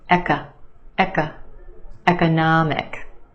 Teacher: The third syllable is your stressed syllable, na, the ah sound, economic. And we have a schwa in the second syllable